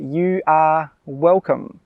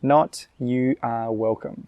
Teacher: When we say this, we really emphasise the 'are'.